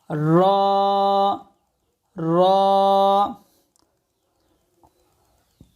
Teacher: র বলার সময় জিহ্বার উল্টা পিঠ উপরের তালুর সঙ্গে লাগবে র জিহ্বার আগ আর উল্টা পিঠ উপরের তালুর সঙ্গে লাগবে